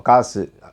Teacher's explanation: அப்போ கா வந்து அழுத்தி சொல்லுவோம், சு வந்து சைலண்டாக சொல்லுவோம். காசு அந்த சு அந்த அரை மாத்திரை. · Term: குற்றிய லுகதம்